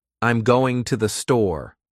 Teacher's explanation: When making a statement, your voice falls. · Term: Falling tone